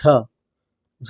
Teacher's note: सघोष महाप्राण व्यंजन है